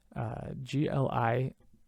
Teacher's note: it's the palatalized l followed by i